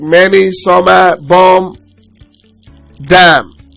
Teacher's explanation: Number 1 is M. It's a voice bilabial nasal stop consonant sound.